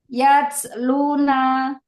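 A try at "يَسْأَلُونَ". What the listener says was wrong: Naknya jangan panjang.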